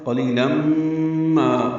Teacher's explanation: لام باریک اور تنوین کے بعد میم آنے کی وجہ سے ادغام ہے